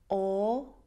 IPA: ɔ: